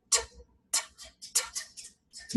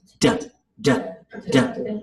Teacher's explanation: between a T and a D, that's the same sound in our mouth, but we have turned on our vocal cords